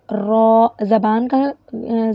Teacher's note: زبان کا کنارہ، زبان کی پشت اور اس کا کنارہ ثنایا اور رباعی کے اندر گمز کے ساتھ لگے